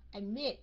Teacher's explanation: So các anh chị thấy mình nhấn cái âm cuối cùng là âm mid, right?